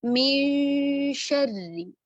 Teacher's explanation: इक्फा का मतलब है छुपाना। हम नून साकिना की आवाज को छुपाएंगे और आगे आने वाला हर्फ जो होगा उसके मखरज के करीब ले जाएंगे। इसी मिसाल को अगर हम देखें तो आगे शीन आ रहा है, तो हम क्या करेंगे, नून को हमने छुपाया, गुन्ना किया, पहले हर्फ पर गुन्ना करते हुए हमने गुन्ना किया नून साकिना पर, और शीन के मखरज के करीब ले गए।